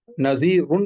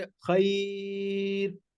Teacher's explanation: खैरुन पढ़ेंगे तो रा पुर है, नज़ीरुन पढ़ेंगे तो रा पुर है। लेकिन जब हम यहाँ पर पढ़ेंगे खैर तो रा बारीक हो जाएगी